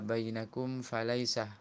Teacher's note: Mim sukun bertemu fa, bacaan izhar syafawi, dibaca jelas mimnya.